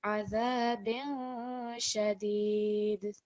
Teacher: Is it going to be short and clear, or are we creating a light nasal sound? So because it's sheen, which follows the kasratain, we're going to have a light nasal sound.